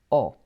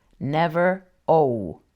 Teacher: La letra O is always short and round, O, never O.